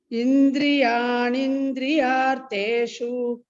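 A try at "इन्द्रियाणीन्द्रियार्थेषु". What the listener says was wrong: Here, dirka. Indriyani indriyartheshu. This you are pronouncing this Mahaprana. Indriyani indriyartheshu.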